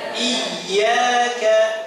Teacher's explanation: Ini ada tasydid ya. Ada tasydid harus dihentak. Coba. Nah, jangan dilamakan.